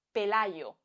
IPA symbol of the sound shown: ʝ